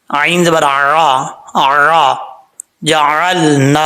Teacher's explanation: نون کے آگے الف ہے، ایک الف کی مقدار لمبا کریں گے۔